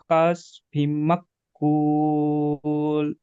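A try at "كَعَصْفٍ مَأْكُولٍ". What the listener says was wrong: বিম মাকুল, এখানে গুণনা দেন ফিম বলে। মাকুল, মাক নয়, মাকুল।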